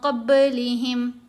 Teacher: با کے اوپر ہم نے کلکلا کیا